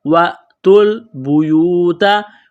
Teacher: واو ساکن سے پہلے پیش ہے، حروف مدہ واو ہے، ایک الف کے لمٹ میں کھینچنا ہے · واو اور الف کو نہیں پڑھیں گے، تا کو لام کے ساتھ پلس کریں گے ، وَأْتُوا الْبُيُوتَ، واو ساکن سے پہلے پیش ہے، حروف مدہ